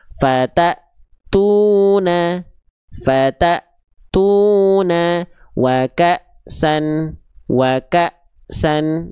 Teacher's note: Tapi kita baca ta-nya akan ngerem karena ada hamzah sukunnya setelah ta.